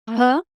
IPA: ɦ